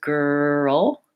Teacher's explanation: The L, because it's a final L, has this kind of sound before it, ol, rather than the L at the start of words like light and little.